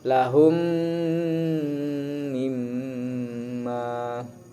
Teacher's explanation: Idgham ma'al gunnah lagi di sini, idgham ma'al gunnah yang kedua, yaitu mim bertasdid. Cara bacanya ditahan serta dengung. Jadi hukum bacaannya idgham ma'al gunnah atau idgham bi gunnah.